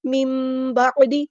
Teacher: نون ساکن کے بعد با آیا ہے تو یہاں پہ اقلاب ہو رہا ہے، نون ساکن کی آواز کو میم میں بدل دیں گے